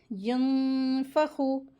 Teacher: अगला वर्ड देखें, यंफ़खु, नून साकिन के बाद लेटर फ़ा आया है तो यहाँ पर इख्फ़ा का रूल हो रहा है। यंफ़खु, गुन्ना करके नून की आवाज़ को जो मखरज है वो छुपा करके गुन्ना करके पढ़ते हैं, इसको इख्फ़ा कहते हैं।